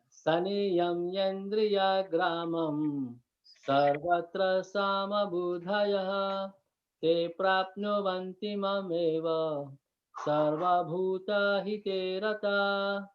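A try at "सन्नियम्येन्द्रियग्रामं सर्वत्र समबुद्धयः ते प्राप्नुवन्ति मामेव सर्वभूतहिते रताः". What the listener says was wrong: Beautiful. Thank you.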